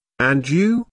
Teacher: notice the rising intonation on and you this shows that is interested in what Jane has to say